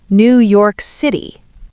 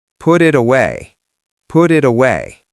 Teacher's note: Americans transform the T into a D whenever it's between two vowels.